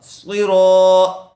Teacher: صاد کو پر کیجئے، اسی طرح را پر ہوگا